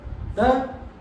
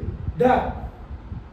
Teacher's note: झटके से श्वास बाहर निकलती है, जीभ को उलटना पड़ता है, उलट कर झटके से श्वास बाहर निकलती है, फिर उस वर्ण का उच्चारण होता है। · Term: ताड़न जात